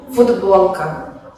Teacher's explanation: Esto pasa en el caso de la palabra futbolka, que se escribe con la consonante sorda t, que se pronuncia en el habla como d, ya que está seguida por una consonante sonora ba.